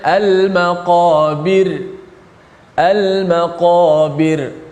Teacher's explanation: Al-maqabir, ra tu dimati dalam keadaan nipis.